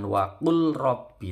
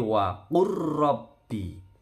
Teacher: Roknya bertasydid saja tapi tidak boleh lama-lama.